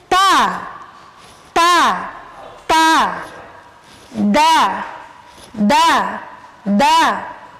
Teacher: ujung lidah bertemu dengan pangkal gigi seri atas